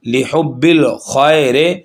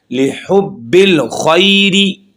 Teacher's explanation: خی اور ری یہ بغیر مجہول کے ہم پڑھ رہے ہیں